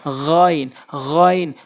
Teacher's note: হলকের শেষ থেকে গাইন উচ্চারণ হয়